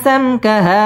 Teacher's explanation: মিম সাকিন ইজহারে খাস গুন্না ছাড়া পড়তে হবে